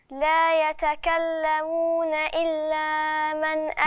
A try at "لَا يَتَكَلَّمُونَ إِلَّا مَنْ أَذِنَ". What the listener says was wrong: ما تمديش قوي أكتر المد، يعني ما تمديش زيادة. إلا من. إلا من.